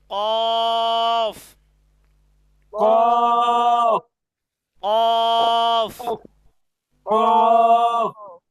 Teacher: জিহ্বার গোড়া তার বরাবর উপরের তালুর সঙ্গে লাগাইয়া উচ্চারিত হয়